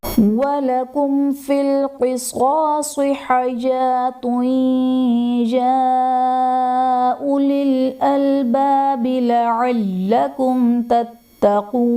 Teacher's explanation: میم ساکن کے بعد حرف با اور میم کے علاوہ فا آ رہا ہے تو یہاں پر اظہار شفوی کا قاعدہ ہوگا، یعنی میم ساکن میں غنہ نہیں کریں گے